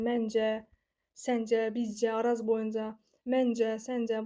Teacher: Bunlar hər biri cacəyə qoşmasıdır və cə vurğu qəbul etmir